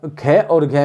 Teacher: खे और घे में अधिक वायु आई तो महाप्राण। इसी प्रकार छे, चे, छे अधिक वायु, जय, झे अधिक वायु।